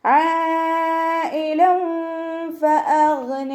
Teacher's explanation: ഇവിടെ ഐനിൻ്റെ മഖ്റജ് ശ്രദ്ധിക്കണം, വസത്തുൽ ഹൽക്കിൽ നിന്നാണ് വരുന്നത്. സൗണ്ടിനെ വ്യക്തമാക്കി കൊടുക്കുക.